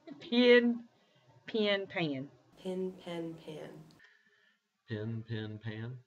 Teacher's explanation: demonstrated a vowel merger pronouncing pin and pen using the same vowel